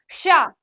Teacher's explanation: जो ये वाली तालव्य वाली शा है, जब हम बोलेंगे तो कैसे बोलेंगे, शा। शा एक सीटी टाइप में हल्की सी निकलेगी।